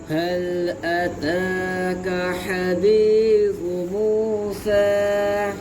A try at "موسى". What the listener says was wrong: झटका लगाते हो आप